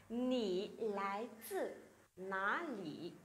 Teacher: Nǐ lái zì, lái zì, chữ Z nhá. Z thì chúng ta sẽ để thẳng lưỡi. À lái zì, rồi không cong lưỡi và cũng không bật hơi nhá.